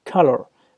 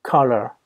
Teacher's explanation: Attention, hein, la syllabe color, pardon, ça ne se prononce pas color, justement, ça se prononce color. La deuxième syllabe, c'est le fameux son schwa